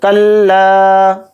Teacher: لام کے ساتھ الف مدہ ہے تو لام الف زبر لا تھوڑا کھینچ کر پڑھیں گے